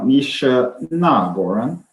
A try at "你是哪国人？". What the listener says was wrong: There's not, by the way, it sounds like a fourth tone. It should be a third tone because it's a question. 你是哪国人？